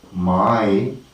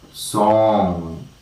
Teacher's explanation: and no air can go through the mouth cavity or cavity entire air comes through the nostrils or nasal cavity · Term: nasal consonant